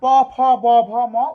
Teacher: প ফ ব ভ ম উচ্চারণ করতে গেলে দুই ঠোঁট মিলিত হয়, ওষ্ঠ মানে ঠোঁট, যেহেতু ঠোঁটের মিলনে উচ্চারিত হয় তাই এটাকে বলা হয় ওষ্ঠবর্ণ।